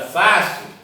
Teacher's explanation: olha a sílaba tônica é Fá, temos última, penúltima, então é paroxítono.